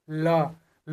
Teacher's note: ल का उच्चारण जब हम कर रहे हैं तो जीभ जो आगे आ रहा है, मसूड़ा को छू रहा है और पीछे मुड़ जा रहा है। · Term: पार्श्विक व्यंजन